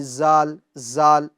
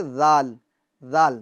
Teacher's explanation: جی ناظرین، یہ جو حرف ہے زا، اس کو ہمیں سختی کے ساتھ پڑھنا ہے اور حرف ذال کو ہمیں نرمی کے ساتھ پڑھنا ہے۔ اگر آپ ذال کے اندر سختی پیدا کریں گے تو یہ اس کے اندر زا کی آواز پیدا ہو جائے گی